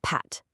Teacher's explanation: Do you feel how pat uses a tiny puff of air from your lips?